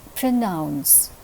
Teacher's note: in the word pronounce the second syllable is receiving the accent